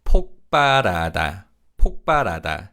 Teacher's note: 비읍 in 발 is pronounced as a 쌍비읍 sound. So it's 폭발하다, 폭발하다.